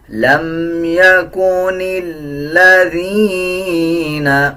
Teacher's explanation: نون کو لام کے ساتھ ملائیں گے، لام سے پہلے جو الف ہے اس کو سائلنٹ کر دیا جائے گا